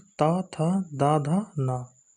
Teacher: इनका उच्चारण स्थान दंत यानी कि दांत होता है। जब जीभ हमारी दांतों के पिछले हिस्से से, पिछले भाग से स्पर्श करती है तब ता वर्ग के व्यंजन बोले जाते हैं।